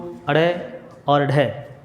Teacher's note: हमारे पास 2 ध्वनियाँ और होती हैं जिनको अड़ और ढ बोलते हैं, उत्क्षिप्त ध्वनि बोला जाता है